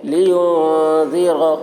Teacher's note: نون کی آواز کو ناک میں چھپا کر پڑھیں گے، اس کو اخفا کہتے ہیں